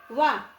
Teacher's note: और उ होता हमारा उ ओष्ठ से तो ये दोनों आपस में मिल गए तो किससे हो जाएगा कंठोष् से ठीक है कैसे हो गया कंठोष्टम कंठोस्टम से उच्चारित होने वाले वर्ण कितने हैं दो ओ और औ दंतोष्ठम क्या है वकारस दंतोष्ठम दंत और ओष्ठ से उच्चारित होने वाला वर्ण है हमारा व